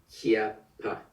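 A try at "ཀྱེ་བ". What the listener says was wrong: Kiewa. Kiewa. Le pas, il est toujours wa quand il est dernière syllabe d'un mot. Kiewa.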